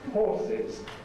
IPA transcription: ˈhɔːsɪz